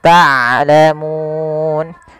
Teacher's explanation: Harusnya dia ain dari tengah tenggorokan kita, dan ain punya sifat bainiyah.